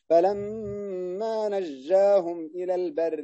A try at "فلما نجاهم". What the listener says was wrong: لا لا لا لا لا تعطش الجيم هكذا.